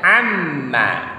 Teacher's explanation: Jadi membacanya amma, tidak boleh seperti bunyi hamzah. Dia harus pas sesuai bunyi ain.